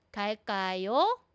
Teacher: yung intonation ko, yung tone ko po, pag may tanong, tumataas, umaangat po yung dulo. 갈 kayo, always going up.